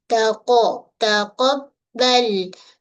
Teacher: Jangan berangin. Qa jahrun. Dia bersifat dengan ah tidak berangin. Jahrun. Taqa taqabbal.